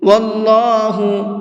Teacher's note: اللہ کے لام کو منہ بھر کے پڑھیں گے، اس لیے کہ اللہ کے لام سے پہلے یہاں پر بھی زبر ہے۔